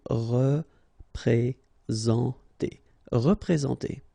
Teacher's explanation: Représenter, all right, remember that you get this N together, and then, well, it's a nasal, so it goes in your nose, and it's en